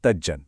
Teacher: तत् प्लस जन में त की कठोर ध्वनि नरम होकर ज में बदल गई और शब्द बना तज्जन।